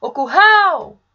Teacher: Percebam que eu me alonguei mais na última sílaba, no hal. Portanto, é essa minha sílaba tônica.